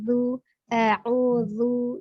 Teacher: Jadi huruf zalnya masih ada kesalahan dibacanya zu. Tapi zal makhrajnya ujung lidah bertemu dengan ujung gigi seri atas